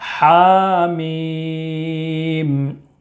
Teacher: یہ بھی سیم ہے، ہا میں کھڑا زبر ہے، اس کو 1 الف کے برابر کھینچ کر پڑھیں گے۔ میم میں مد لازم حرف مخفف ہوگا، 3 الف یا 5 الف کے برابر کھینچ کر پڑھیں گے۔